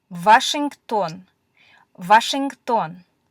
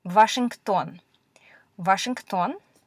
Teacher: Russian does not have a W sound, so it usually gets replaced with a V sound.